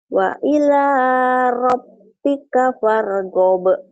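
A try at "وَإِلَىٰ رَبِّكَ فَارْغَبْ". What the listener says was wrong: Bagus.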